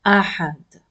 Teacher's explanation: I will not pronounce ahadun with this tanween dhamma if I want to stop here.